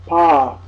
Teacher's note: You add the A ki matra, Pa. This is the non-aspirated labial Pa.